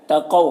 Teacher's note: قوف حروف مستعلیہ میں سے پر پڑھیں گے اور یہاں پر واولین سے نرم آواز کے ساتھ جلد پڑھیں گے